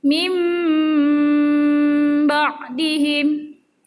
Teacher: Iqlab adalah nun sukun atau tanwin bertemu huruf ba, maka bunyi nun sukun atau tanwin diganti bunyi mim sukun disertai dengung.